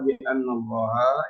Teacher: anallah itu dibaca tebal tafkhim